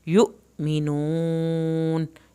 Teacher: हमज़ा और अलिफ दोनों पे झटका लगता है अगर ऊपर जज़्म हो तो। यु मिनून, यहाँ पर वाव साकिन को हमने खींच के पढ़ा, आखिर में नून नहीं हिलाना।